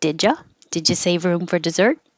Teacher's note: d and a y make a ja